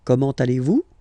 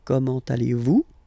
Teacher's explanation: it's a question, so raise a little bit your voice at the end